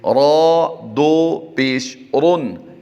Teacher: را دو پیش رن، یعنی را پر دو پیش کی وجہ سے اسے ہم نے پر کیا ہے۔ را پر دو زبر ہوں یا دو پیش ہوں تو بھی ان کو پر کر کے پڑھتے ہیں۔